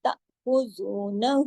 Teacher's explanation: خا کو موٹا پڑھا، زو کو 2 حرکات کھینچا، نون کو 1 حرکت